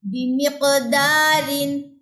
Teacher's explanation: زبان کی جڑ تالو کے نرم حصے سے لگ رہی ہے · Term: قاف موٹا